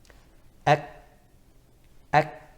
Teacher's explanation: there's shiddah at the beginning and then hams afterwards.